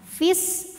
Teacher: Namun dibaca panjangnya ini hanya saat berhenti saja. Saat wasal fi-nya jadi pendek, namanya takhallus bil hadfi. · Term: takhallus bilhfi